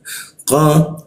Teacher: Lalu masuk ke qa di siku tenggorokan. Lidahnya kita naikkan sehingga qa tidak ada hembusan udara ketika membacanya